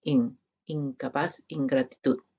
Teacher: En palabras como incapaz, ingratitud, se pronuncia como in, incapaz, ingratitud. Es esta nasal velar, esta versión velar de la nasal que no tenemos como fonema separado en español, pero que existe como parte del repertorio fonético del español.